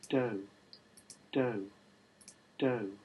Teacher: If you listen to the F0 trace here, to the F0 contour here, what you hear is a fall.